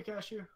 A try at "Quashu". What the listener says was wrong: No, Quashu. Not Cashew. Quashu. With a KW.